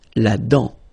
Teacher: La dent, final T not pronounced.